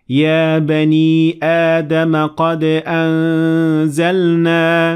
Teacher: you need to combine Hamzat Qata and follow it with a long vowel of Alif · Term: Hamza plus alif